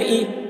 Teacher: زیر کو جلدی پڑھیں، تھوڑا بھی نہ کھینچیں، معروف پڑھیں، مجہول آواز سے بچیں